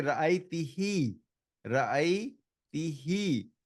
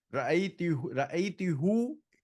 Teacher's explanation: the pronoun which is who has changed from who to he. This is only for vocalic harmony